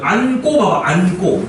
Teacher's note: 뒤에 기역 고가 오니까 어때요? 꼬로 발음되죠. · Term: 된 소리